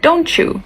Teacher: In connected speech, you would say don't you. So the sound t combines with the sound y to make the sound ch and you get don't you.